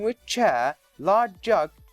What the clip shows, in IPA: wɪʧ ʧeə